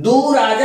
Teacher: विसर्ग का लोप हो गया है, लुप्त हो गया है, और ऊ जो है वह दीर्घ ऊ में परिवर्तित हो गया है।